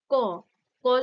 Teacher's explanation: স্বরতন্ত্রী কাঁপছে না কণ্ঠস্বরও গম্ভীর হচ্ছে না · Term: অঘোষ ধ্বনি